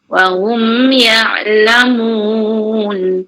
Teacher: mim sabdu rapat bibir, jangan buka bibir.